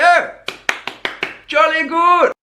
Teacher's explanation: it sounds like he's raising all the back vowels all goes to uh and uh goes to uh it's kind